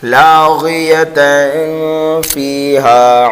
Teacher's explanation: تنوین کے بعد فا حروف اقفا میں سے آنے کی وجہ سے یہاں پر اقفا ہوگا